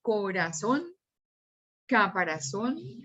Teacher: el acento intensidad y la sílaba tónica están en la última sílaba